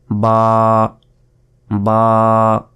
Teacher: এটা হচ্ছে সরিয়া ল হসই আর ফ আলিফ আলিফ আলিফ এই আলিফ মুখের খালি জায়গা হতে এটি উচ্চারিত হয় আলিফ এরপর বা বা এভাবে টেনে পড়বেন বা বা এক সেকেন্ড পরিমাণ টেনে পড়তে হবে দুই ঠোটের ভেজা অংশ থেকে · এরপর বা, বা এভাবে টেনে পড়বেন, বা বা 1 সেকেন্ড পরিমাণ টেনে পড়তে হবে দুই ঠোঁটের ভেজা অংশ থেকে, বা। এরপর তা, এটাও 1 সেকেন্ড টেনে পড়বেন, তা।